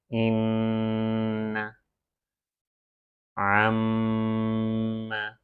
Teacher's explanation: نون اور میم کی آواز ناک سے آنی چاہیے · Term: غنہ